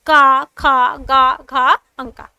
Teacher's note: का वर्ग के अंतर्गत जो आपके व्यंजन आते हैं तो उनका उच्चारण हम किससे करते हैं कंठ से करते हैं